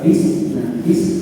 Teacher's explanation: Huruf sin keluarnya dari ujung lidah bertemu dengan ujung gigi seri bawah.